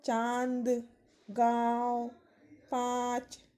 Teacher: अनुनासिक। अनुनासिक का उच्चारण नाक और गले दोनों से किया जाता है